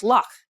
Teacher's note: it's more like a prolonged k sound the trick is to make a k sound without cutting off the airstream completely